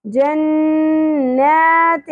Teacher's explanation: غنہ کریں گے نون مشدد کے اوپر اور کھڑی زبر ایک الف کے برابر کھینچنا بھی ہے.